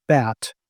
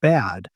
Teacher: If you pay attention to the way you say bat and compare that to the way you say bad, you'll notice that in the word bat, the vowel is actually quite short. But in bad, it's lengthened, right? And this is not just for those two words, but anytime you have like bit or bid, there's going to be a vowel different length and or back and bag.